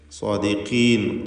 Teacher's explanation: ഖാഫിനും തഫ്ഖീം, കുറഞ്ഞ തഫ്ഖീം മാത്രമാണ് ഖാഫിന്, കസ്റായതുകൊണ്ട്.